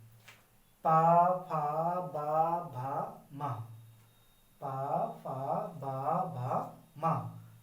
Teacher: बिना होठों को मिलाए आप इनका उच्चारण कर ही नहीं पाएंगे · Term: पा वर्ग, ओष्ठ